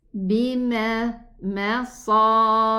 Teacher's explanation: The sad is elevated, but the meme is not.